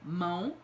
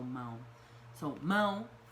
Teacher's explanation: it's nasalized right it's got the tilde over the a m a o tilde over the a um it would be